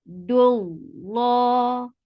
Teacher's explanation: Lafz jalala is heavy because there is dhamma before it